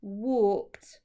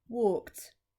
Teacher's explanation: And then this is the past tense verb, and it is walked. And again, the e and the d at the end sound like a t